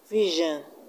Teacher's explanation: And in the word vision, we have the stress on VI.